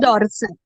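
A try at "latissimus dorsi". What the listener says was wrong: डॉर्सी, डॉर्सल नहीं, डॉर्सी, ठीक है।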